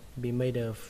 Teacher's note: Các bạn cứ lưu ý cái chữ of, mặc dù nó kết thúc bằng âm F trong cách viết, nhưng mà trong cách đọc thì nó là kết thúc bằng âm V